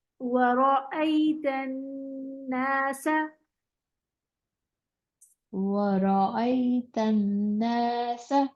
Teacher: ورأيت الناس، ورأيت الناस इसमें वाव होंठ बोल करके, ठीक है, वाव को होंठ बोल करके पढ़ेंगे, रॉ को मोटा पढ़ेंगे , हमजा को अलग से आवाज निकालेंगे, वराई, वराई तो नहीं